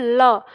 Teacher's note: हमारी जीव मुड़ के दांत मूल के पास होती है और जो हवा है वो जीव के दोनों ओर से निकलती है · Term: पार्श्विक वर्ण